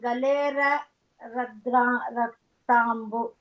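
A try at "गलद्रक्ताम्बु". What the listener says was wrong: No, it's galat raktambu. Okay, galat raktambu or galat draktambu. The dra sound will come there.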